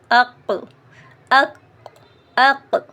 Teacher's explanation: زبان کی جڑ جب اوپر کو اٹھتی ہے اور اوپر کو لگتی ہے تو وہاں سے قاف ادا ہوتا ہے